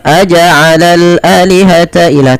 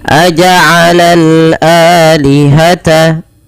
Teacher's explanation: Dipanjangkan 2 harokat karena ia mad badal adanya hamzah bertemu dengan alif.